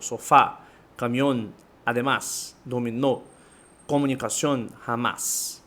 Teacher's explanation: La acentuación fonética recae en la última sílaba. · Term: Palabras agudas